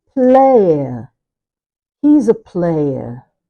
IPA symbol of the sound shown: eɪə